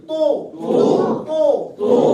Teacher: زبان کی نوک کو دانتوں کے پیچھے لگائیں گے, آواز پور ہوگی